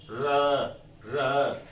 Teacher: प्रकंपित क्योंकि ये एकमात्र ऐसा वर्ण है जिसको जब हम बोलते हैं तो हमारी जिह्वा कंपन होती है। जैसे सर्प जो है चलता है पेट के बल, रेंगता हुआ तो ऊपर नीचे होता है उसका पेट, उसी प्रकार से हमारी जिह्वा उसकी भांति बार बार बल खाती है। · तो जिह्वा जो है बिल्कुल बल खाती हुई सी प्रतीत होती है